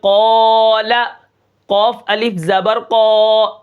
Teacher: الف کو جتنا بھی ہم کھینچیں گے یہ موٹا ہوگا